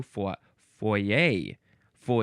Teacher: I think you could also emphasize the second syllable if you wanted to.